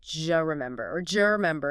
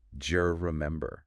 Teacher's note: They create a D sound, the J sound in judge, and the vowel in you often reduces to schwa or disappears. So do you remember can absolutely sound like ja remember or ja remember in rapid casual conversation. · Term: reduction